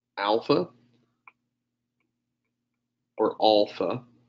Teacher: The way you pronounce this is the A in father. So kind of a rounded ah sound.